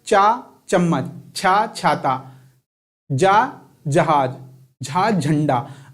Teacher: देखिए जब आप चा बोलते हैं तो जीभ आपके तलवे में लग रही है, बार बार कहाँ लग रही है, तलवे में।